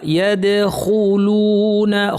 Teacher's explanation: খুলু খু ভারী লু পাতলা।